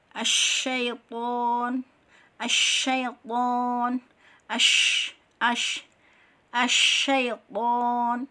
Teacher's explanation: sifat tafasi, yaitu menyembur atau terkumpulnya nafas dan suara di tengah-tengah mulut